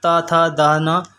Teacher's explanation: तो ये सारी चीज़ें हैं, ता था दा ना। तो ये जो बोली जा रही हैं वो दांत से बोली जा रही हैं, इसको जो है दंत व्यंजन बोला जा रहा है।